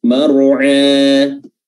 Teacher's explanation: Iya, ya, bukan mar'a tapi mar'a, huruf ain yang keluar dari tenggorokan bagian tengah wasatul halqa